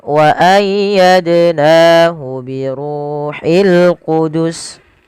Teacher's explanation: Dal sukun sebagaimana yang awal wajib dipantulkan karena ia bacaan qalqalah. Nahu mad tabi'i ada fathah bertemu alif.